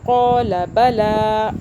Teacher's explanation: لام کو نہیں کھینچا کیونکہ لام الف زبر لا ہوتا ہے کھینچنے کے لیے, اس لام کے آگے الف نہیں ہے.